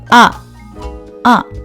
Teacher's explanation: 성대 접지가 좋은 소리는 아 아 딴딴한 소리가납니다